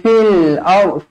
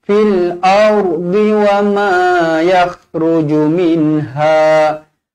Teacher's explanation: alif lam qamariyah, jelaskan lam mati di sini.